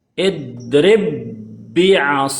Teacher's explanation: ini digabungkan jadi satu menjadi dibacanya seperti ini jadinya idrib Bia yang tadinya dua ba sekarang dijadikan satu